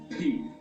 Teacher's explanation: It is still produced with the lips, but it is in the way that the closed lips are very quickly opened with at the same time letting out the air pressure